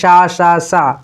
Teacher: जब उच्चारित करते समय जो इसका हमारे मुख से जो वायु निकलती है वो बहुत ही घर्षण पूर्वक निकलती है, वही आपकी उष्मीय कहलाता है। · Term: उष्मीय वर्ण